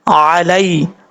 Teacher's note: لام کے بعد یا ہے، یہ یا مدہ نہیں ہے، یا لین ہے، اس کو بھی لمبا نہیں کریں گے